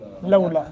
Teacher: لولا دونوں پر ایک ایک سیکنڈ کی مد ہوگی۔